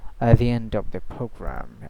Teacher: he didn't pronounce the t. So uh t it was completely silent here. So at the end of the program at also it's not a gutal t.